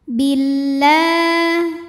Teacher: Karena ada huruf lam yang barisnya fathah panjang. Cara membunyikannya dipanjangkan lamnya 2 harokat. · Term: matobi'i muqaddar